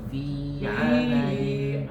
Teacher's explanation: Fi-nya jangan terlalu panjang, Pak. Fi amadin. A-nya enggak panjang.